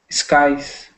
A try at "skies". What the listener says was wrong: Oh, good. Sorry, I don't know what I heard there. That was good.